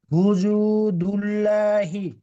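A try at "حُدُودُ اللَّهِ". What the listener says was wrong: হুজু হবে না ওটা ওটা দাল আছে দাল আছে জাল নেই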